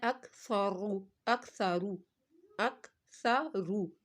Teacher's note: سا کو پتلا اور رو کو موٹا